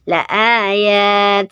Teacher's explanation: Kalau berhenti disukunkan taknya menjadi hams ya, ngeses.